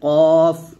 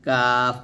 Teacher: কফ মোটা, কাফ পাতলা